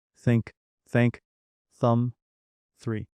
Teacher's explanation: For think, your tongue should go between your teeth and you blow air.